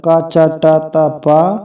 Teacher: ये अल्प प्राण जो हैं ये अघोष भी हैं